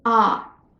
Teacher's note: we are saying ah instead of O every time this vowel is unaccented